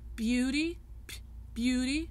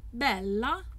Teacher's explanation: You hear there's a p in there. There's more air. It's more aspirated. Aspiration means having air in it.